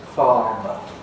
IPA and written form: ˈfɑːmə (farmer)